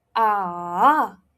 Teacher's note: The third tone looks like an alphabet V. Okay, so it drops and then it rises. You pronounce it like this: ah, ah.